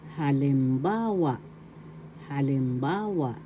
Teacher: the accent is in the third syllable